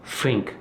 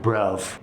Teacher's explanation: swapping the TH for F or V. So think sounds like fink, and brother sounds like bruv. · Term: Cockney accent